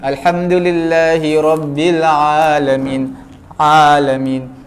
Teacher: Mana ain bukan daripada hidung, daripada mulut.